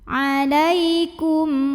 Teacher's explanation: Berikutnya ada hukum izhar syafawi karena mim sukun menghadapi huruf yang bukan mim, bukan juga ba, maka kita baca mimnya ini jelas.